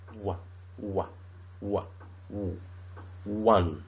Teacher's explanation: the O sound in the word one is pronounced as wa